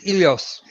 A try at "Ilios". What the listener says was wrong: You see, I think you pronounce the H, dude.